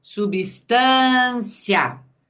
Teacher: O IA foi pronunciado numa abertura de boca só.